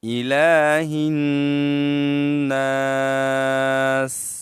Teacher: لام کے اوپر کیا ہے؟ کڑی زبر ہے، تو ہم اس کو ایک الف کی مقدار ہم کھینچیں گے، اونچا کریں گے، لمبا کریں گے